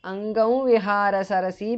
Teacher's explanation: because of sandhi anuswara changes to the nasal of va